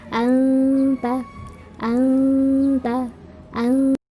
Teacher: Intinya dengung selama 3 harokat.